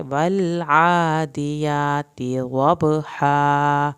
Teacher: یہاں بھی کھڑی زبر ہے، تا کی زیر کو لمبا نہیں کریں گے اور عادیات کے فوراً بعد اگلا لفظ اٹھائیں گے، والعادیات ضبحا، یہاں پر تاکہ ہماری زیر لمبی نہ ہو۔